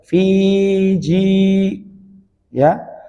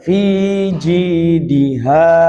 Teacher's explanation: di situ ada ya ji ditahan karena dia mat tabi'i. Fi juga mat tabi'i.